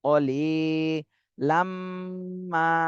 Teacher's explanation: লিতে এক আলিফ টান দিতে হবে, জেরের বামে জজমালা ইয়া, মদের হরফ